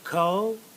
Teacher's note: We've got 2 syllables in color, but what I want you to notice is the first syllable is accented, and the second syllable is not accented